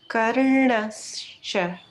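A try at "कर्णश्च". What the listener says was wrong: Excellent. Exactly that way.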